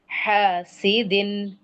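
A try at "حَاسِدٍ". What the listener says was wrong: हासिदिन, इसको पूरा 2 काउंट्स दें। ठीक है, इसे पूरा 2 काउंट्स दें।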